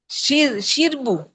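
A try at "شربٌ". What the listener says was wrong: বু কেন? না, ওখানে বু কেন? ওখানে একটু অন্যভাবে শিরবুন, র, হসন্ত, বর্ষকার বু, দন্তন্য। কারণ কারণ এই জিনিসটাই কিন্তু আমাদের মাথায় নাই বলেই আমি আজকে আবার দীপুকে জিজ্ঞাসা করতেছিলাম, আমরা যখনই বিশেষ্য বলবো তখনই এটার শেষ অক্ষরে অবশ্যই দুই পেশ, অত দুই জের থাকতেই হবে।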